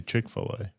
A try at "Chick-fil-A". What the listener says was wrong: Yeah, you do say Chick-fil-A weird. You emphasize chick. Yeah, it's Chick-fil-A.